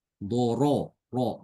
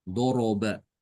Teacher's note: Sebelumnya fathah ya. Harokatnya fathah. Doro, ro, maka rohnya tebal.